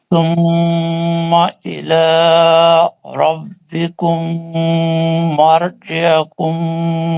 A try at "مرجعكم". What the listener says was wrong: مرجی حکم نہیں ہے، مرجی حکم ہے، پیش ہے عین پہ. نہیں، غنہ نہیں کریں یہاں پہ. ایک منٹ مرجی حکم پکڑ لیں، میم کو پکڑ لیں. مرجی حکم حکم حکم گول ہوٹوں سے پڑھیں. ایک زیادتی آ رہا، گول ہوٹوں سے پڑھیں.